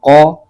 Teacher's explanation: قاف کو موٹا کر کے بھی پڑھیں گے، یہ حروف مستعلیہ کا حرف ہے